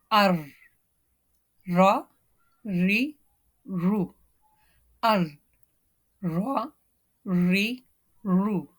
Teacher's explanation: You may notice while pronouncing ra, this little vibration, this is the part of the characteristic of the ra.